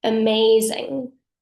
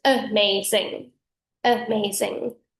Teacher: the m blends the first syllable and the second syllable and the zed blends the second and the third syllable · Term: fem articulation style